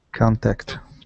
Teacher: So stress at the very beginning and uh it's an a sound at the beginning.